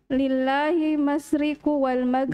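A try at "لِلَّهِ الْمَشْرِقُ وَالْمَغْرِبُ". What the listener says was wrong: Ya, jangan dihilangkan alnya. Lillahi. Lillahil masyriqu wal maghrib.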